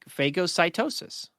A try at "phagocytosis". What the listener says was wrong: Oh, wrong emphasis on the A.